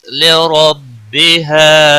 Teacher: را زبر کی وجہ سے پر پڑھا جائے گا۔ بِہَا الف مدہ ہے، 1 الف کے برابر کھینچ کر پڑھیں گے۔